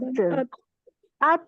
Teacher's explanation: जुबान, very good माशाल्लाह, बारकल्ला फीकुम, इसमें जबान का यूज हो रहा है, हमजा ता जबर जुबान अत, अब अत, क्योंकि जबान हिल रही है, ऊपर लग रही है दांतों पे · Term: जबान का लेटर